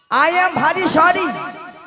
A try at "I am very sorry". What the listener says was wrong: I am ভারী নয় মাসি, বলো আই এম ভেরি সরি।